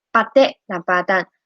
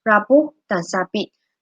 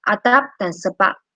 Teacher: Sekatan pada dua bibir dilepaskan serta-merta. Bunyi yang dihasilkan ialah konsonan letupan dua bibir bersuara p.